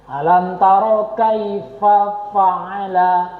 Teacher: Fa itu bertemu dengan bibir bawah. Itu makhrajnya. Bukan bibir bertemu bibir.